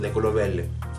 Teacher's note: My B/B sound in my Dominican accent is going to be like a VW sound kind of mixed together. It's just a very soft sound. So like, if I were to say the color green, verde, I usually say verde, de color verde. · You see, I didn't say color verde, I didn't say de color verde, I said de color verde. It's like my lips don't even touch, but the V sound doesn't always go down either. It's more like a W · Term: B/V sound